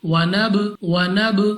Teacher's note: جب ہم اپنے اس با کو، اپنے اس لفظ کو ادا کریں گے تو ہمارے مخرج میں جنبش سی ہوگی، یعنی ہمیں اپنی آواز واپس لوٹتی ہوئی سنائی دے گی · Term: قلقلہ